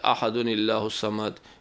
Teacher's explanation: تنوین کی آواز جو ہے زبر زیر پیش میں بدل جائے گی اور نون کے نیچے زیر دے کر ملائیں گے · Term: نون قطنی